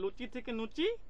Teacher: রাঢ়ীতে কি হবে না, ল দন্তন্য হয়ে যাবে